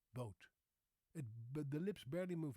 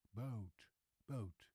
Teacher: the lips barely move, the mouth barely moves when I say boat. It's a very flat O.